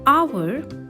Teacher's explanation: in the word hour, the H is silent and it begins with the vowel sound A